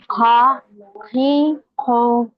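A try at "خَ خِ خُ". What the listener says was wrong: वेट, आपके इसमें भी काफ की मिलावट है, थोड़ी थोड़ी। ख, खी, खू, ख्वाब वाला ख, इसमें ख्वाब नहीं होना, ठीक है, ख्वाब। हमारी खातिन जाती है दुकान पे, भैया बुरखा बताना, बुरखा, बुरखा। वो क है वहां पे, है ना, क, ख।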